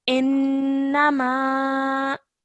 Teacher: whenever noon has a shadda on it, okay, that means that we have to hold a nasal sound in our nose for 2 seconds while we say it. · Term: gunna sound